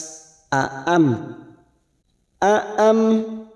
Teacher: Sufaha aam ada 2 huruf hamzah, harus jelas, harus tegas. Aam mim sukun bertemu waw, idhar safawi, baca jelas tanpa mendengung